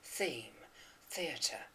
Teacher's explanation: we have to pronounce the th sound with the voiceless version.